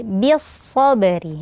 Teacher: Bis sabari ya, bi di sini huruf tipis karena ba-nya berharokat kasroh. Kemudian setelahnya ada sod yang berharokat fathah, maka ba-nya ditipiskan, sodnya ditebalkan.